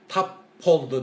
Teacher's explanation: Біреу қатаң, біреу ұяң. Осы жерде тап болды деп б дыбысы п-ға орын алмасады екен